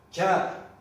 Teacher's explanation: K harfi ağzımızdan çıktığında onunla birlikte bir tane de H harfi çıkar. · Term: vurgulu